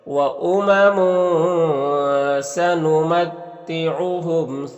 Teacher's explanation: تنوین کے بعد سین حروف اخفا میں سے، تو یہاں پر اخفا ہوگا